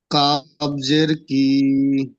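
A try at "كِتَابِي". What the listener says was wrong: কি টান দিলেন কেন? এটি তো হারাকাত। বা ইয়াজের বি, কিতা, কাতা নয়, কিতাবি।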